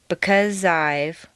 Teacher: the z sound at the end of because and the I sound of I blend together smoothly